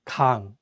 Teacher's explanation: Please note that in this case, the 이응 is at the end, so the word 강 ends with an ng sound